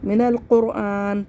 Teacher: قاف کو موٹا پڑھنا ہے اور را کو بھی موٹا پڑھنا ہے کیونکہ را ساکن سے پہلے پیش ہے